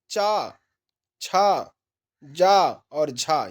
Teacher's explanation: तालव्य से देखिए चा, छा, जा और झा, यह कहां से निकल रहे हैं? तालव्य से निकल रहे हैं